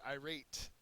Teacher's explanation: Second syllable is accented.